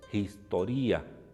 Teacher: el espíritu áspero suena como una jota apenas esbozada